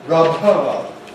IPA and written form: ˈrʌb̚ ˈhɑːd (rub hard)